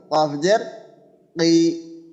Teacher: কফের ক্ষেত্রে কফটা একটু মোটা হবে